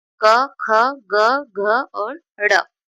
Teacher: उच्चारण स्थान के आधार पर कंठ या कंठ से निकलने वाले व्यंजन